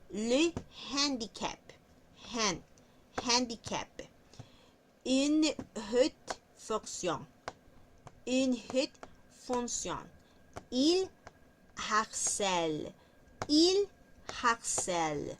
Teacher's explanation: acá suena a un sonido parecido al de la J, pero también es un sonido de como cuando aspiramos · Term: H aspirada